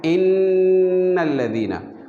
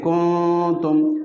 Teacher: नून इख्फ़ा में जो है नून की आवाज़ अधूरी सी होती है, आधी सी निकलती है, जैसे कुंतुम, ठीक है।